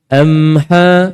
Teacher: ada getaran, maka ada dengung, cuma tak sempurna. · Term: dengung tak sempurna